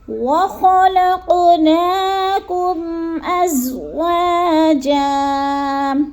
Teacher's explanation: خا حلق کے شروع والے حصے میں، جیسے خا موٹا بھی کرنا ہے اور گول بھی پڑھنا